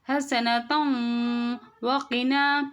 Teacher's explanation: தன்வீனை விட்டுட்டு பின்னுள்ள எழுத்துல இணைச்சு உன்னா பண்ணணும்.